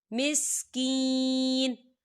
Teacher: یہاں دیکھیں چھوٹی سی آپ کو تو ہی نظر آ رہی ہے، تو یہ وقف مطلق کی علامت ہے. تو وقف کی صورت میں نون جو ہے ساکن ہو جائے گا